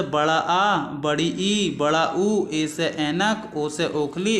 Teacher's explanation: ये जो होते हैं दोस्तों दीर्घ स्वर होते हैं, इनमें 2 मात्राओं का समय लगता है बोलने में, तो इन्हें दीर्घ स्वर कह देते हैं और थोड़े ये खींचकर बोले जाते हैं